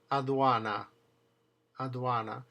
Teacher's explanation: It's soft, but it's definitely between your teeth. It's called an interdental fricative. · So when the D is in the middle of the word, surrounded on both sides by a vowel, it's pronounced th.